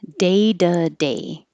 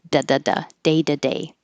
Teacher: The T changes to a D.